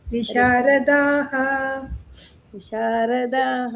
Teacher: ಹರೇ ವಿಶಾರದಾಹ ದೀರ್ಘ ಎಳಿಬೇಕು